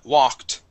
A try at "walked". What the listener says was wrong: Excellent.